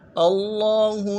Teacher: لام کے اوپر کھڑا زبر ہے، تشدید ہے، زور دیں گے، کھڑا زبر کو ایک الف مدار میں کھینچیں گے، اور ہا کو نرمی سے ادا کریں گے